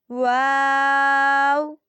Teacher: واو، دونوں ہونٹوں کی گولائی سے ادا ہوتا ہے